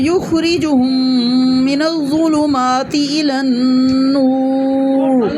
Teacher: من الظلم یخرجہم دونوں پیش ہیں، ان کو ہونٹوں کو گول کر کے پڑھنا ہے. من الظلمات یہ بھی دو پیش ہیں، دونوں کو ہونٹوں کو گول کر کے پڑھیں.